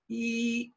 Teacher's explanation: We have our tongue goes very high for E. E is very high in the mouth.